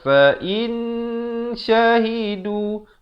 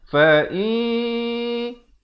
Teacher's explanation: Fa'in, sekali lagi di sini ikhfa hakiki. Hukum di sini adalah ikhfa hakiki, dibacakan dengan disamarkan kadar 2 harakat.